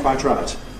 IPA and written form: ˈkwaɪt ˈraɪt (quite right)